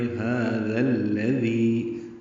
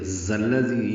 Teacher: لیکن الذی کا حمزہ عارضی ہونے کی وجہ سے ذال کو لام سے ملائیں گے۔ الذی میں بھی ذال ہے تو دونوں ذال نرمی سے پڑھیں گے۔